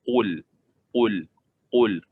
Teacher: Bila huruf qaf makhrajnya di belakang lagi